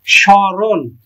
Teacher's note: তাহলে এই মফলার উচ্চারণ হয় না। তবে সামান্য নাসিক্য ধ্বনির প্রভাব পড়ে।